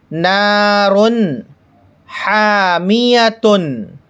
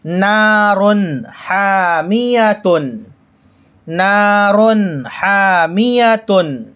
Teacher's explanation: تنوین کو ظاہر کریں گے، غنہ اخفا بالکل نہیں ہونے دیں گے۔ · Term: اظہار